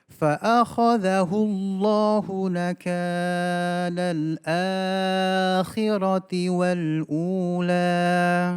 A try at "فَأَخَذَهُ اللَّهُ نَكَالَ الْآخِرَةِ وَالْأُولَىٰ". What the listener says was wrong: Dikurangi sedikit mat tabi'inya. فأخذه الله نكال الآخرة والأولى.